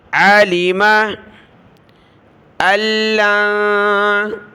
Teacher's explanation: حمزہ کو لام کے ساتھ، لام کو نون کے ساتھ ملایا